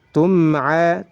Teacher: Nunnya disamarkan. Tum'a, mimnya harus jelas. Kenapa? Karena dihukumi idhar. Idhar syafawi